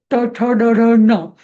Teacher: मूर्धा ट ठ ड ढ ट वर्ग जो आहे तो ट ठ ड ढ ण, तो मूर्धेला म्हणजे अजून वरती चिकटतो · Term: मूर्धन्य